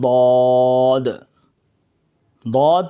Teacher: दद का मखर जुबान की करवट और ऊपर की दाढ की जड़